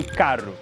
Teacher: falam um R seco, com a língua atrás dos dentes